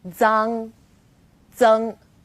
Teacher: For example, Z as in zang or zeng. Its pronunciation is quite similar to the DS sound in English, like cards, but you need to move the tip of your tongue closer to the back of your teeth.